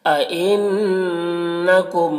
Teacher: ان نون مشدد غنہ کے ساتھ میں پڑھیں گے